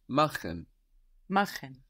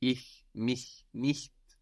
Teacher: So when we have a CH with an I or an E before, it's soft. When we have another vowel before it, it's hard with friction, like in machen.